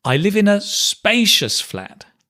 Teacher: it's like you're going up and hitting the word spacious or stressing the word